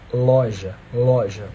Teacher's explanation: O L encosta mais em cima, nos alvéolos dentários. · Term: alveolar